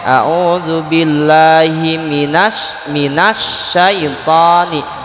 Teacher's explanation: Syaiton ini ada alif lam, tapi dibacanya langsung nun ke sya. Minasyaitoni, alif lamnya tidak dibaca. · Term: alif lam syamsiyah